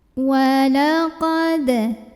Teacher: Di sini ada hukum namanya qalqalah sugro karena ada huruf qalqalah yaitu dal yang sukunnya sukun asli dan ada di tengah-tengah bacaan. Maka cara membunyikannya adalah dengan dipantulkan, pantulannya kecil.